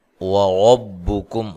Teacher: وَرَبُّكُمْ، را کو موٹا ادا کرنا ہے، کاف کو باریک، اور یہاں ملانے کی صورت میں میم ساکن کا اظہار ہوگا۔